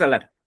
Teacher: Entonces, aquí, a diferencia de la palabra agua o acta, que dije rato, aquí la que sí, la que suena más fuerte no es la A, sino más bien en este caso la LAR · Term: sílaba más fuerte